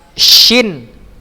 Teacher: dengan cara tengah lidah tidak menempel ke langit-langit ya, ini tidak menempel, tidak terlalu menempel sehingga dia tidak tertutup. Dia tidak terlalu ya menempel, tapi tidak terlalu, ada sedikit rongga ya. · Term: huruf shin